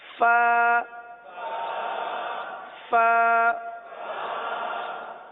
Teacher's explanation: یہ اوپر کے دانت اور نیچے کے ہونٹوں کا جو تر حصہ ہوتا ہے وہاں سے ادا ہوتا ہے. جیسے کہ میں نے پہلے بتایا تھا کہ ہونٹوں کے دو حصے ہوتے ہیں، ایک جو باہر رہتا ہے وہ خشک رہتا ہے، اور جو تھوڑا سا دانتوں کے ساتھ رہتا ہے یا بند ہو جاتا ہے وہ تر رہتا ہے.